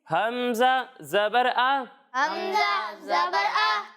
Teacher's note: جب ہم ہا اور حمزہ کی ادائیگی کریں گے تو انہیں حلق کے نچلے حصے سے پڑھیں گے